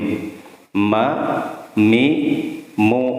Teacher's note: Itu paduan antara bibir atas dan bibir bawah.